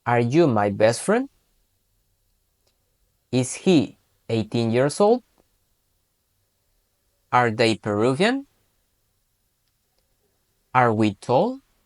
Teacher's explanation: Sin embargo, cuando hablemos de manera interrogativa o hagamos una pregunta, vamos a hacer ese pequeño arco hacia arriba